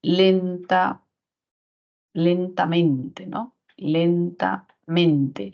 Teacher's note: estas palabras en particular terminadas en mente tienen doble acentuación